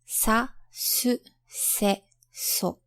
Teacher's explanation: Next we have alveolar consonants. They are articulated by your tongue touching against your alveolar ridge, which is where your teeth meet your gums.